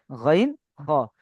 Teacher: জি, এরপরে গাইন, খ, গাইন, খ, এর মাখরাজ হালাকের বা কণ্ঠনালীর শেষ ভাগ হতে উচ্চারিত হয়।